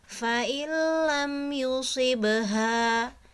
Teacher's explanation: bunyi nunnya itu dibuang langsung masuk ke huruf lam tapi tanpa disertai gunnah